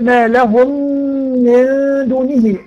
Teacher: وادخال الميم الساكنه في الميم المتحركه بحيث يصيران حرفا واحدا مشددا مع الغنه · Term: ادغام متماثلين